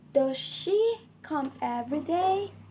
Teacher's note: This rising tone helps indicate that the speaker expecting a response or hasn't finished speaking.